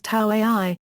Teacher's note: the Kauaʻi dialect was known for pronouncing this as [t]